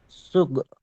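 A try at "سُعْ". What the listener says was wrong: সুগ নয়, গইন হলে সুগ হবে, এখানে আইন সু।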